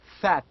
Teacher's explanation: fat if you try to pronounce if you try to produce you can feel that your upper teeth is almost touching your lower lip